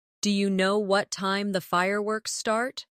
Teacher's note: Do you sounds like dia in fast speech.